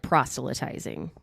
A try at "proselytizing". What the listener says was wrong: I think the T is silent. I think it's proselytize. Proselytize.